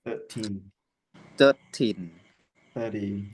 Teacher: in 13, and the stress is on the second syllable, and in 30 the stress is on the first syllable.